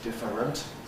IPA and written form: ˈdɪfərənt (different)